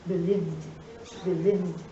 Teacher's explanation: How do you pronounce the past tense of the verb believe? The final sound of the verb believe is v. It is a voice sound.